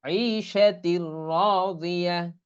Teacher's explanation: এখানে গুন্না হবে না, বরং মিলাই পড়তে হবে, গুন্না ব্যতীতই মিলাই পড়া। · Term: গুন্না ছাড়া মিলিয়ে